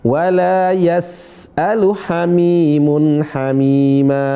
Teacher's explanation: Sebagian teman-teman yang baru mulai belajar ya mengqalqalah huruf sin. Sin enggak qalqalah tapi suaranya mengalir. Kemudian angin juga mengalir. Ya. Rakhawah dan haes namanya. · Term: Rakhawah dan hamas